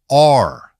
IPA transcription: ɑr